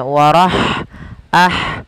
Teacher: lafal ha ketika dia sukun maka huruf han-nya itu dialirkan nafasnya · ini menandakan itu ya kecil atau kalau di sini wau kecil maka kita panjangkan Hunya dua harakat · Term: mad Silah qasirah